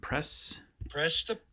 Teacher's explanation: good job on spotting the aspiration there at the very beginning · you can hear that puff of air